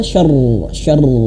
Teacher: Kalau tebal syar syar diangkat tangkal lidahnya bagian dalam.